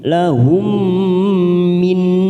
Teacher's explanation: lahum mim sukun bertemu mim idgham mimi, kita tekan 3 ketuk